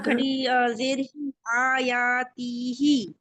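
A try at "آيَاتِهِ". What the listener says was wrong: यानी ती को नहीं खींचना, ही को खींचना है। ती को खींच दिया तो आपके लिए ही खींचना मुश्किल हो जाएगा। ती को छोटा रखेंगे तो फिर ही कहा जाएगा फुल।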